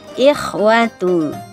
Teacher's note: kha harus kena ya, diberikan haknya kha, ngorok